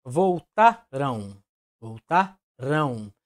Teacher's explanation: a junção da vogal a com a letra m certo mas a letra M nesse caso está apenas acentuando a vogal a para dar esse som de um esse som anasalado e sabemos também que a letra M proporcionam um som vocálico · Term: ditongo nasal decrescente